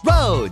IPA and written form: rəʊd (road)